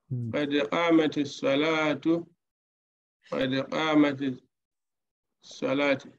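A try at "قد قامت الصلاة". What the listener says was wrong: Correct.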